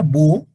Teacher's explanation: vocales juntas se pronuncian como sílabas distintas en la palabra búho la h en español no tiene sonido es nada más una expresión gráfica